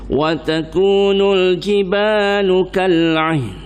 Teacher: Nun pun tak bunyi, tapi letak lidah di makhraj nun, tempat keluar huruf nun, letak lidah langit.